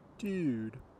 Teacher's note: If you think about a California surfer saying dude, he's not saying dude, he's saying it further forward in his mouth, saying actually dude. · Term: the dude vowel